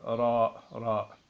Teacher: Ra n'existe pas en français. C'est un R roulé, ce qu'on appelle un R roulé